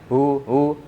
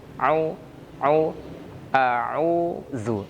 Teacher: Au, jangan hu, au, a'udzu, ya. Sempurna huruf ainnya, karena ain itu keluar dari tengah tenggorokan.